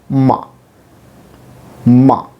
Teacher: the sound itself will be um plus schwa with the help of shua it may be told easily so